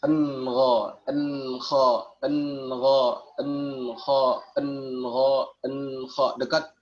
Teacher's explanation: Jadi ketika nun mati atau tanwin bertemu dengan huruf ghain dan kha. Ya, makhraj huruf ghain dan huruf kha ini di tenggorokan bagian atas. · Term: izhar adna